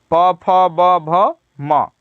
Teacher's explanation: इन सब का उच्चारण जो होता है ओष्ठ से होता है, ओठ जिसको और तद्भव शब्द में होठ कहते हैं।